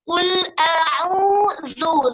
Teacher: zu yang ujung lidahnya keluar sedikit. Qul a'udzu, zu, keluarkan sedikit ujung lidahnya. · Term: zal